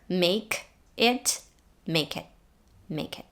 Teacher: The T in it isn't dropped. It still can be heard, but it's softened rather than articulated. The K in make isn't fully articulated as it connects to it.